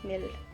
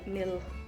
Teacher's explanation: М буде пом'якшена і Л буде пом'якшена, міль, а не міл.